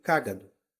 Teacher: cágado tem a antepenúltima sílaba tônica